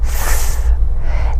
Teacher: Next, fricatives are formed by narrowing the air channel and forcing the air through, creating friction at the place of production, as in the consonant F. The air is constricted with the upper teeth and lower lip.